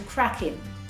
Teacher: The pronunciation is often shortened to crackin'.